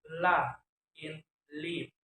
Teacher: contacting tongue tip onto alveolar ridge so that the air passes through both sides of the tongue as sound la in lip.